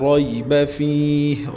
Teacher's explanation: ری را زبر کی وجہ سے اس کو پر کر کے پڑھیں گے